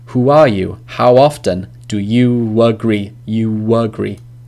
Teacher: if a vowel in the first word ends in a round vowel, so your mouth is more round, like who or how or do, they're quite round, then the link in is a wa.